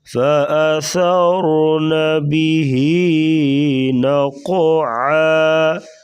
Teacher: نقعا عین گلے سے نکالیں گے